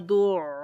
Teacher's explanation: اوپر وہی، کیونکہ شد آ گئی ہے تو یہاں پر عین کی آواز جو ہے وہ تھوڑی جماؤ کے ساتھ آئے گی